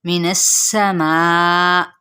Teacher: نون کی زبر کو سین کے ساتھ ملائیں گے. سین کی سیٹی کو واضح کرتے ہوئے یہاں پہ چار حرکات کے برابر کھینچیں گے. من السماء حمزہ کی زیر کو بھی واضح کریں گے.